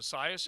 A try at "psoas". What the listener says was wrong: Oh, psoas. The P is silent. It's like P pneumonia.